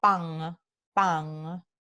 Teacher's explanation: La nasal alveolar n, se velariza, ¿no? Entonces se vuelve a n, cuando está al final del enunciado en el caribeño, en el centroamericano, en el sur de México y en el andino. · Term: velarización de la nasal alveolar